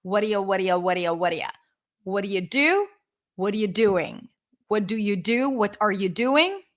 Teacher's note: you can write the middle sound with a D, or you can write it with an R if you use the flapped R in your language, like the ra sound.